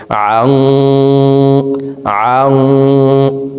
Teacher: নুন সেকেন্ডের পরে ইকফার হরফ সদ আসছে, এই কারণে এই নুন সেকেন্ডকে নাকের ভিতরে লুকাইয়া গুন্নার সহিত পড়তে হবে। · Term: ইকফাহ গুন্না